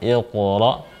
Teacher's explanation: qaf sukun berarti dibaca tebal